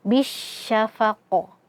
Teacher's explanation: Nah, di sini ada qalqalah kubra ya karena huruf qalqalahnya terletak di akhir · Bish di sini ada alif lam ya, alif lam syamsiyah. Karena alif lamnya di sini tidak kita anggap keberadaannya, dan huruf ba langsung kita masukkan ke huruf shin